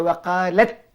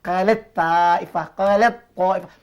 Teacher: Masukkan bunyi ta ni ke dalam ta. Setiap kali anak jumpa ta mati, jumpa dengan ta, terus masukkan ta dalam ta. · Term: hukum idgham